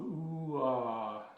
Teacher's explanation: you'll hear an ooh phoneme, as in boot, ooh, and it transitions into an ah phoneme, as in father